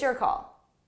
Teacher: so notice how call is a little bit louder and longer